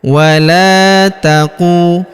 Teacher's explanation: Walaqu huruf qu kita panjangkan dua harakat karena wau sukun di depannya